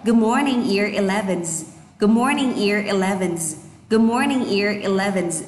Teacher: Chỗ nào có chữ R cô nâng lưỡi lên, bởi vì anh Mỹ thì thông thường nó hơi cong lưỡi một tí với chữ R ạ.